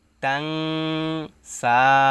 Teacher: তাং এরকম উচ্চারণটা হবে, নাকের ভিতরে যাবে , কারণ নুন সাকিনের পরে ইকফার হরফ সিন আসছে। সো এটা